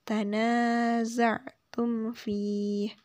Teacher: tidak boleh berdengung tum fi karena di sini ada mim sukun bertemu dengan huruf fa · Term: izhar syafawi